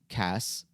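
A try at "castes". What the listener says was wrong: No, you said Cass.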